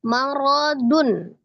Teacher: Diidghamkan sertai dengan gunnah. Marodun, ro-nya fathah dibaca tebal.